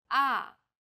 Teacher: The fourth tone falls sharply and quickly from a high pitch.